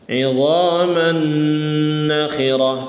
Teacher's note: Idhaman nakhirah digunnahkan, ya. Digunnahkan, dipanjangkan sebentar.